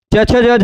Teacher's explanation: यहां बोलने के लिए दांत से थोड़ा सा ऊपर टच कर रहे हैं।